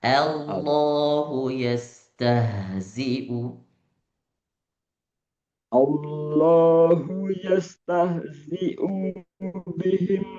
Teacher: A lebih maftuha, A lebih terbuka. artikulasinya lebih jelas.